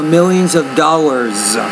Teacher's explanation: So you want to put the S on there, and because it comes after a voiced consonant sound, the S there needs to sound more like a Z